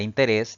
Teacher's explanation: en el inciso c la palabra interés debe llevar tilde porque la mayor fuerza de voz recae en la última sílaba contando siempre de derecha a izquierda